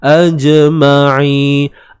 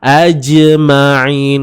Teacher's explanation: Jim di sini qalqalah sughra, lantunan kecil sahaja